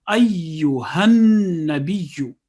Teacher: 2 seconds on each tashdid letter, mushaddad letter.